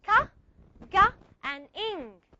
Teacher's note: The velum. It means we use the back of our tongue to touch the velum. Velus sounds, or you can call it the soft palate.